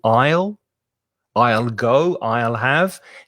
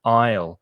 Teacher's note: the aisle be careful of the pronunciation of that word a-i-s-l-e the s is silent so the pronunciation is exactly the same as the contraction with i will